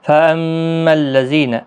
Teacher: میم مشدد پر غنہ ہوگا، ذی یا مدہ ہے، ایک الف کی مقدار کے برابر کھینچ کر پڑھیں گے۔